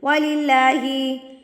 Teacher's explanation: اللہ سے پہلے جب زیر ہوتی ہے تو اللہ باریک پڑھی جاتی ہے. اب یہاں پہ یہ مت سمجھیے گا کہ واؤ کے اوپر تو زبر ہے تو باریک کیوں پڑھی ہے.